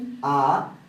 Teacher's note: তাহলে আমরা ই উচ্চারণের সময় জিহ্বা অনেকটা উপরের দিকে যায় এবং এ বলার সময় আরেকটু নিচে নেমে আসে, এ উচ্চারণ করার সময় আরো নেমে আসে, এবং আ উচ্চারণ করার সময় জিহ্বাটা একেবারেই নিচে পড়ে থাকে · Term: নিম্নাবস্থিত মধ্য স্বরধ্বনি